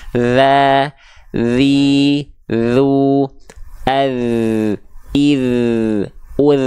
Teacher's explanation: huruf dzal itu dilafalkan cukup menyentuhkan bagian ujung lidah kita tipis-tipis ke ujung gigi seri atas, bukan digigit dan tidak terlalu ditekan. Ya. Sehingga ketika kita lafalkan, bacanya adalah kalla idza, harus ada ngalir suaranya.